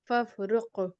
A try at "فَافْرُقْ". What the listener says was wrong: جی فف پہ کوشش کرے قلقلہ نہ نکلے ٹھیک ہے صرف قاف پہ